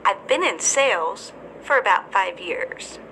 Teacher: pauses after the word sales and five years